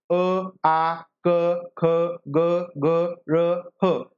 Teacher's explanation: कंठ म्हणजे जो काही मुखाचा भाग आहे पहा कंठातून या ठिकाणी यांचे उच्चार होतात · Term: कंठे वर्ण